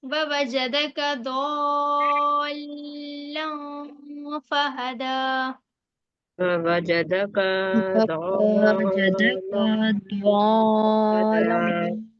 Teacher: تنوین کی آواز کو ناک میں روک کر پڑھیں گے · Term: اخفا